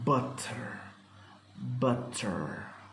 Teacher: Thus, This also described as a voiceless glottal stop. This glottal stop is made instead of T in many Scottish and Cockney pronunciations.